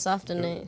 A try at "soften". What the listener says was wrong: Did you hard pronounce the T in soften?